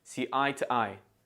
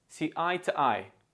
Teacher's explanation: because the preposition to is not a keyword it is unstressed and we use the schwar sound T instead of to listen